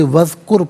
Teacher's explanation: اذکر، واو پر زبر ہے، اسے اذکر کی ذال ساکن کے ساتھ ملائیں گے، درمیان میں سے الف یعنی حمزہ کو حذف کیا جائے گا، اسے وذکر پڑھیں گے، را ساکن ماقبل کاف پر پیش را ساکن کو پر کر کے پڑھا جائے گا۔